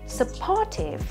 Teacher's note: đây là đáp án duy nhất mà trọng âm rơi vào âm tiết thứ hai